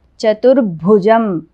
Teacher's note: చతుర్భుజం భూ అనేది మహాప్రాణం